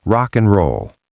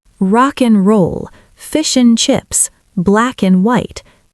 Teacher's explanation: the and becomes n, just the letter n.